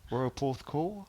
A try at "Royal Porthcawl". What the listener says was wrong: Well, you went a bit with the cowl, didn't you? Just a tad.